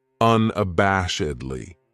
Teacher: This adverb has 5 syllables, and the stress is on that third syllable, that bash